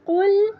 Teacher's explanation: قاف کو موٹا پڑھیں گے، ٹھیک ہے، کل کل کر کے نہیں پڑھیں گے، اس کو موٹا پڑھیں گے قل قاف میں۔